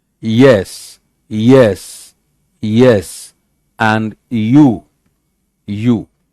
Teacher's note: Palatal, made of the tongue and the hard palate